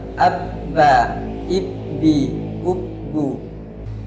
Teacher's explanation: tidak ada angin yang mengalir ketika menyebutkan huruf ba. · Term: jahar